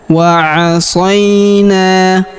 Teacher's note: Huruf sa kita ayun sekali karena terdapat ya sukun di depannya.